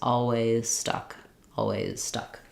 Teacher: Long vowel, the Z can be there or it can be dropped and I can go right to the S.